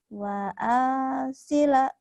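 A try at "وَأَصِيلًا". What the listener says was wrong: Yang panjangnya mana saya tanya. Kenapa yang lainnya ikut panjang sama akhir doang ya?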